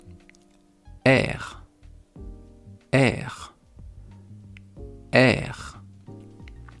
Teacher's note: C'est très compliqué de faire un son qui sort de la gorge quand on n'est pas habitué. Le R, il vient vraiment de la gorge.